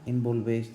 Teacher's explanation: tenemos el énfasis en la última sílaba y termina, con lo cual es una aguda y termina en S.